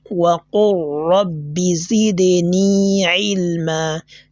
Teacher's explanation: you've not heard the sound of the lam, right? This is because the lam has been assimilated into ra.